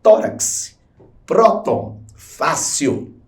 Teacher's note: Todos são termos paroxítonos, ou seja, a sílaba tônica é a penúltima